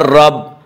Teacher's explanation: را کے زبر ہے اس لیے را کو پر پڑھیں گے